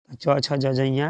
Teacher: च, छ, ज, झ, इया बोलिएगा, आपका जबान जाके ऊपर सटेगा तालू में। जबान ऊपर। च, छ, ज, झ, इया तालू पूरा।